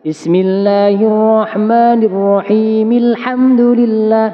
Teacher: contohkan Bismillahirrahmanirrahim Alhamdulillah nah ini yang maksud saya dihidupkan Bismillahirrahmanirrahim Alhamdulillah pada kata mimnya itu harus hidup ketika kita cepatkan baca surat fatihahnya